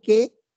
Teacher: Pero cuando digo que, no suena la U, solo suena la E, no es diptongo.